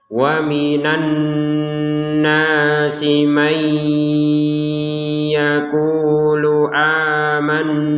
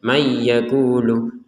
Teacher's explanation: kalau ini nun sukunnya dimasukkan ke ya. May disertai dengungan, jangan lupa.